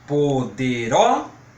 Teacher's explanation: Onde vai a força maior na pronúncia dessa palavra? No ró. Poderosa. É quase como se as outras sílabas fossem acessórias.